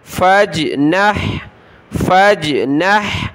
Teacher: فا کو جیم کے ساتھ ملائیں گے. جیم کلرفل قلقلہ ہوگا. فا جیم زبر فج، نون حا زبر نح.